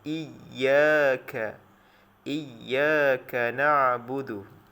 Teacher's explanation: Makhraj ya adalah tengah lidah. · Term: huruf ya